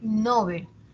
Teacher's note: Dice, está muy extendida la pronunciación llana, a pesar de que se recomienda Nobel, se extiende su uso como llana, es decir, como grave